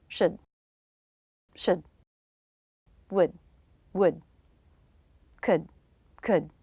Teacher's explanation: And these are 3 words that can be reduced. As with many reductions, we change the vowel to the schwa and speed up the word.